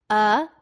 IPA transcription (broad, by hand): ə